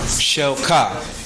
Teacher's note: you hear the way i'm saying it it sounds like a question